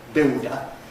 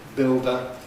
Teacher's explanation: in the classical and more usual pronunciation, [ˈbɪldə] <builder>, we have a ‘lateral approach’.